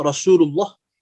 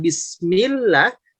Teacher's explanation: Jadi kalau ada lafaz huruf lam terletak pada lafaz Allah yang sebelumnya ada fathah atau sebelumnya ada dhammah ya. Seperti kalimat Rasulullah, maka lafaz Allahnya itu jadi tebal. Namun kalau sebelumnya kasroh seperti lafaz bismillah, maka lamnya jadi tipis.